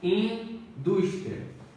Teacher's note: Penúltima sílaba é tônica, paroxítona, terminada em ditongo oral.